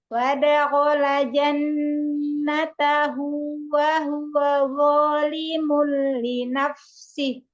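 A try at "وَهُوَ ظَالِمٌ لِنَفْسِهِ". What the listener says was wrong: Wa huwa, waw yang kedua mau jelas lagi. Wa huwa zalimul li nafsihi.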